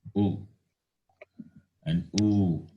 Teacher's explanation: Labial. These are pronounced by rounding the lips, therefore labial.